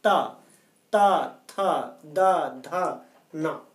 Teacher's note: तावर्ग का उच्चारण स्थान है दंत, दांत। इसमें जीभ का जो अग्रभाग है वो ऊपरी जबड़े के दांत के पास स्पर्श करता है, इसलिए इन्हें दंत वर्ण कहा जाता है।